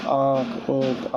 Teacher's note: अनुनासिक स्वर ध्वनियां होती हैं जिनका उच्चारण मुंह और नाक की सहायता से किया जाता है